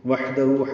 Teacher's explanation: ہا ساکن ہے، وسط حلق سے ادا کریں گے اور اس پہ ہمس ہوگا